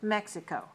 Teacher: So Mexico is 3 syllables, stress on the first. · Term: stressed on the first